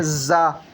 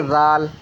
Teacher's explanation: زا کو جب ہم پروناؤن کرتے ہیں تو اس میں سیٹی آتی ہے، زا۔ لیکن زال میں سیٹی نہیں آتی ہے، زال کو نرمی سے پڑھتے ہیں، زال۔